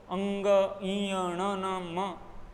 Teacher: हवा मुख के साथ साथ नाक से भी निकलने का प्रयास करती है और निकलती है, इसलिए इनको नासिक के व्यंजन कहा जाता है।